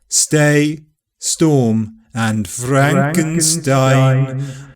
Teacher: neither affrication or aspiration will occur after /s/ so STAY STORM and FRANKENSTEIN are unaspirated and unaffricated